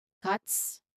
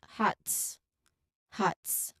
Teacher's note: it's the T sound made with your tongue tapping behind your teeth, and then it's followed immediately by the S sound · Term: TS cluster